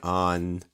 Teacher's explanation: You can hear how the vowel kind of shifts a little bit towards the end.